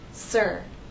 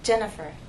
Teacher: the IR sound can be stressed or unstressed it's stressed in sir but it's unstressed in my name Jennifer